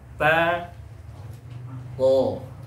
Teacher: Ta dan huruf to itu sama-sama keluarnya pada ujung lidah ya, menempel pada gigi seri atas, pangkal gigi seri atas antara gusi dengan gigi seri atas.